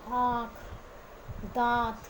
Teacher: अनुनासिक, इसका उच्चारण नाक और मुंह द्वारा किया जाता है।